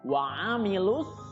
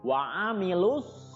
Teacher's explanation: ga sama Mad Thobi'i panjangnya dua harokat kemudian wa amilus disitu lu juga tidak dibaca panjang Karena bertemu dengan alif lam syamsiah